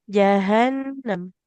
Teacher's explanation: Huruf H-nya di pangkal tenggorokan.